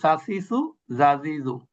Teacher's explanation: জিহ্বার আগা উপরের দাঁতের আগা থেকে উচ্চারিত হয় তিনটা।